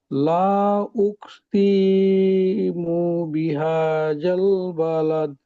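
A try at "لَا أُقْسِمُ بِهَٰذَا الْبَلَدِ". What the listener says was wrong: লা, এখানে মাদ্দে মুনফাসিল 3 আলিফ টান। আর উকসিমু এটা তাড়াতাড়ি পড়তে হবে। লা উকসিমু বিহাদাল বালাদ।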